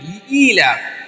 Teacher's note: یہ معروف پڑھنا ہے، مجہول آواز سے بچنا ہے